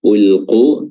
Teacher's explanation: Ulqu, huruf qafnya di sini makhrajnya adalah aqsal lisan ya, pangkal lidah bertemu dengan langit-langit bagian lunak, langit-langit atas. Lalu di sini dia mad tabi'i 2 harakat saja.